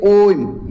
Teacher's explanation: ओम ये अधिक समय लग रहा है। दीर्घ से भी अधिक समय लग रहा है। यहां पर दीर्घ है। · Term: प्लुत स्वर